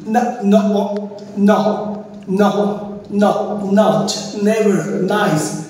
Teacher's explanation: দেন হচ্ছে এটা হবে আমাদের জিহ্বার আগে কোথায় টাচ করবে, আলভিওলার অর্থাৎ আমাদের উপরের দাঁতের যে খাঁজকাটা বাড়ির যে খাঁজকাটা অংশ রয়েছে সেখানে টাচ করবে জিহ্বার আগাটা